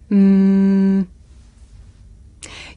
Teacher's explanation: my lips and letting the sound come through my nose mmm I can even feel my nose vibrating